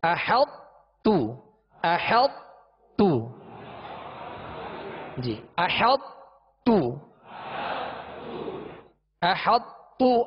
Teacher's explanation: ناقص سے مراد یہ ہے کہ طا کو تا میں، طا کو تا سے اس طرح ملایا یا طا کو تا میں اس طرح داخل کیا کہ طا کی صفت پر، یہ صفت موٹا ہونا اس کی باقی رہی۔ احط تو، احط تو، جی احط تو، احط تو، آخر میں طا کی آواز نہیں نکالیں گے، تا کو باریک پڑھیں گے۔ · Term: ادغام ناقص, ناقص ادغام